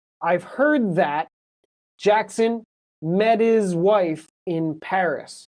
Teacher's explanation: The T is a stop and you can't hear it. But in this sentence, if it's met his, the T sounds like a D.